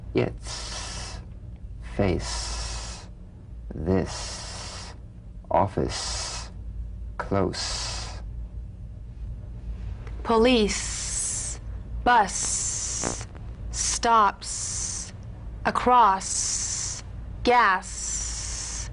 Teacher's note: the s is like the z except it's unvoiced so it's the same tongue placement as the z the z the s is like a gentle escape of steam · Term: unvoiced s sound